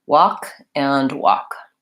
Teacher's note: both of those have the W the AH vowel as in caught law and the K sound so you see only three sounds even though we have four